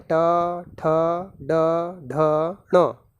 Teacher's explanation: ये सारे जो वर्ण हैं इनका उच्चारण स्थान होता है मूर्धा, और ये सभी वर्ण मूर्धन्य वर्ण कहलाते हैं